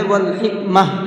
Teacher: پھر تھوڑا سا پیچھے سے لٹا کر کے پڑھتے ہیں۔ اور ہم نے یہاں پر جب گول تا پر آیت کی ہے تو گول تا کو ہا بنا کر کے پڑھا ہے